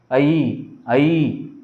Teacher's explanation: అ ఈ అనే రెండు అచ్చులు కలవడం వల్ల ఐ ఏర్పడింది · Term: సంయుక్త అచ్చులు